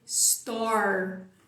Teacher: você vai terminar a palavra com a língua lá atrás fazendo R retrô flexo